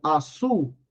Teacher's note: a tonicidade recai sobre a última sílaba e essa sílaba é constituída com uma semivogal U.